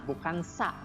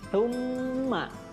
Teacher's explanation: cara membacanya lidahnya seperti digigit ya antara gigi atas dan gigi bawah